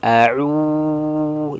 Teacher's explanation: huruf itu keluar dari makhraj Al jaauf rongga tenggerokan dan rongga mulut terbuka